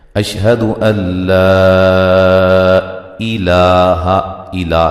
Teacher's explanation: لا اس کو لمبا کریں گے، ایک الف کے مد، ایک الف کے برابر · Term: مد جائز